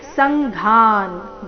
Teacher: ಸಂಘಾನ್ ಘ ಮಹಾಪ್ರಾಣ ದೀರ್ಘ